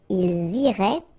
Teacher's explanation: make the liaison as well. You get this S and then the vowel after.